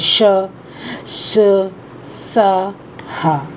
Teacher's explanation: इन व्यंजनों के उच्चारण में हवा किसी स्थान पर रगड़ खाकर बाहर निकलती हुई ऊष्मा उत्पन्न करती है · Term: ऊष्म व्यंजन